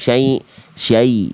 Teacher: Di bagian syai jangan masuk hidung.